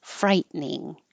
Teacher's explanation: when I write it I have to think frighten frightening but we don't say the middle te and it just turns into two syllables